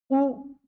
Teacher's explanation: वक्त आपका ओठ गोल हो जाए वृत्त के समान हो जाए जिनके उच्चारण में ओठ की आकृति वृत्त के समान हो जाए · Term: वृत्ताकार